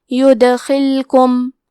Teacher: کلمت یدخلکم میں حرف دال پہ جزم ہے، یہاں دال کا حکم ہے قلقلہ. قلقلہ کا معنی ہے حرف ساکن کو ہلانا تو ہم حرف دال کو ہلاتے ہوئے یہ کلمہ کو پڑھیں گے